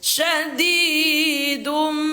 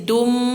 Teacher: Bukan dun lagi bacanya tetapi menjadi dum sambil didengungkan dua harakat. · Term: iqlab